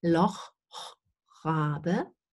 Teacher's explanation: Then Rabe, that's the same location. The R is pronounced in the same location where you pronounce the Loch fricative.